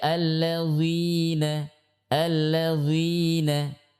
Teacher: kesalahan dalam huruf dzal ini dibaca dengan tebal